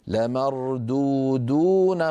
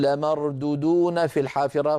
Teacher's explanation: فبعض إخواننا من السرعة يقولون لمردودون في الحافرة، فيخطف الواو الأولى ولا يمدها